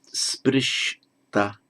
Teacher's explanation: whenever you get a sh followed by a t, both become retroflex.